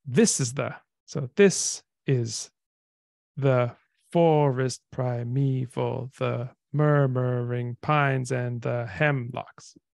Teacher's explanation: So we have in English stressed, unstressed, unstressed, stressed, unstressed, unstressed. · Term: dactyl